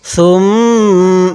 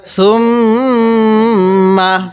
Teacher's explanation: মিমের উপর তাজদিদ আছে এজন্য আমরা গুন্না করব